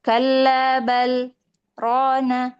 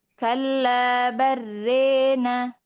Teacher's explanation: Pada kata balrana di sini Imam Hafz itu membaca dengan saktah ya kalla bal rona. Adapun Imam Sybah itu membaca dengan mengidghamkan lam ke ro. Dan ingat ada imalah di sini ya, ada imalah pada fathah ro dan alif. · Dan ingat ada imalah di sini ya, ada imalah pada fathah ra dan alif.